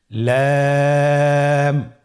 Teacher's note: লাম হরফটি উচ্চারণের ক্ষেত্রে অবশ্যই বারিক হবে এবং 3 আলিফ টেনে পড়তে হবে